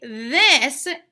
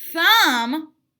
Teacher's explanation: so when you say this you can feel a vibration when you say thumb you don't feel the vibration